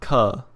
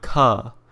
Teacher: The second consonant is the aspirated form of the previous one